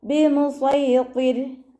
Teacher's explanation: റോ നിർത്തുമ്പോൾ സുക്കൂന് കൊടുക്കുമല്ലോ, അപ്പോൾ റോക്ക് സുക്കൂനും മുന്നേയുള്ള അക്ഷരത്തിന് കെസ്റയുമായ റോ നമ്മൾ താഴ്ത്തിയാണ് ഉച്ചരിക്കുക കേട്ടോ. ബിമുസൈത്തിർ അങ്ങനെ വേണം നിർത്താൻ.